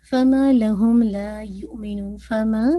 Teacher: ماں کو to count stretch کیجیے گا ماں موٹا نہیں کیجیے گا ماں جیسے ایک دم نارمل رکھیے گا میں بھی نہیں میں